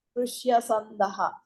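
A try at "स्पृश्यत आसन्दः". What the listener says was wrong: కలపద్దండి. వేరువేరుగా చెప్పు. కలపకూడదండి. పృష్యత ప్లస్ పృష్యత ఆసందః అయింది అంతే. సో ఇక్కడ కూడా ఏకార స్థానంలో అయ ఆదేశం వస్తుంది కాబట్టి స్పృశ్యతయ ప్లస్ ఆసందః అయింది. యకార లోపం చేస్తే స్పృశ్యత ఆసందః అయింది.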